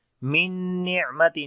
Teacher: نون کے اوپر شاید آئے تب بھی نون غنہ کرتے ہیں، تو آواز کو ناک میں لے کر جائیں گے اور ایک سیکنڈ لمبا کریں گے ، عین کے اندر صفت توسط ہوگی، نرمی کے ساتھ پڑھیں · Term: ادغام ود غنہ